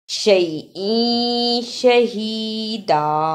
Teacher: تنوین کی آواز کو تھوڑی دیر ناک میں چھپا کر غنہ کرنا ہے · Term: اخفا